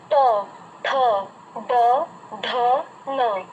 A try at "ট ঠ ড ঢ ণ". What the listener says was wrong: ন, আবার করুন, লক্ষ্য করতে থাকবেন। প্র্যাকটিস করতে থাকুন, আপনার সেটিং করতে হবে এটা। শুধু লক্ষ্য রাখবেন যে টটার সময় বলার সময় জিভটা যেখানে গিয়ে স্পর্শ হচ্ছে, ন উচ্চারণ করার সময় উচ্চারণ ঠিক জিভটা গিয়ে লাগছে কিনা। যদি না লাগে তাহলে কিন্তু ওই সাউন্ডটা আসবে না।